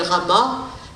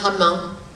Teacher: au lieu de dire a en fin de mot on va dire un parce que le un est articulatoirement plus facile à dire que a un a c'est tendu un c'est relâché donc c'est pour ça